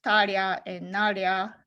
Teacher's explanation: tareba becomes taria and naria with the palatalization